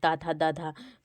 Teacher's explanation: जीभ जो होती है वो दांतों पर लगती है। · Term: दंत ध्वनि